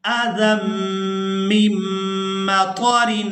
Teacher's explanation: زال کو میم مشدد کے ساتھ ملائیں گے، میم کو میم مشدد کے ساتھ ملائیں گے، اور یہاں دونوں میم مشدد پر ہم نے غنہ کے ساتھ ادائیگی کرنی ہے